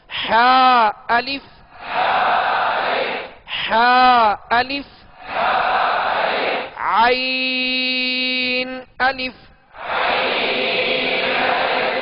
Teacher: حا اور عین کا ایک ہی مخرج ہے، یعنی درمیان حلق سے ادا ہوتے ہیں، حلق کے درمیانی حصے سے یہ دونوں حروف ادا ہوتے ہیں.